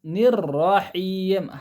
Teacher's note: نون کسرہ باریک پڑھیں گے، پھر اس کے بعد را کو پھر موٹا پڑھیں گے، تو آواز نیچے جا کے اوپر جائیں گی، جیسا نررحیم، ہا کی آواز حلق کے درمیانی حصے سے نکلیں گی۔